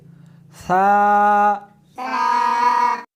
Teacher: اس حرف کو زبان کے اوپر کے تالو سے ملا کر پڑھیں گے. تا اس حرف کو زبان کو دونوں دانتوں کے درمیان رکھ کر پڑھیں گے